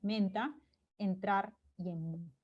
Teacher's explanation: una E más nasalizada, ¿no? Cuando está entre consonantes nasales, menta, entrar y en, ¿no?